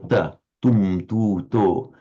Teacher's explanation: it's called the dental because the tip of the tongue is against the inside of the upper teeth